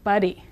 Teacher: the English D said quickly sounds like the Spanish R between vowels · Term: single or flap R